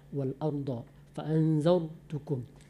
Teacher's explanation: Wal arda agak bulat mulut kita membacanya. Romati sebelumnya huruf berbaris patah, maka dia dibaca tebal.